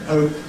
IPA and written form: həʊp (hope)